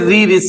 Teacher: री ऋषि का अगर हम बोलेंगे तो जीभ का आगे का हिस्सा जो है ऊपर ज्यादा टच करता है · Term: मूर्धा